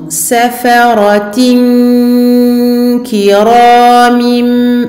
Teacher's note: Attention à faire ici la runna. La runna du nun sakin du tanwin. Ici, on a ce qu'on appelle l'irfa, irfa, dissimulation.